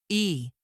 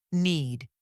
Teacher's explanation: This sound is very common, and many learners pronounce it correctly, but they pronounce it too quickly. American English stretches this vowel slightly, giving it a smoother and clearer quality. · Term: the long e sound